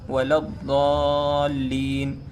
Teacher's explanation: ضاد، آپ کو پڑھنا ضاد ہے، اس طرح پڑھنا ہے کہ سامنے والے کو د کی آواز آئے، د، لیکن آپ کو پڑھنا ضاد ہے، وَلَا الضَّالِّينَ، لیکن جب سامنے والا سنتا ہے تو وہ د کی آواز سنتا ہے، آپ کو پڑھنا ضاد ہے۔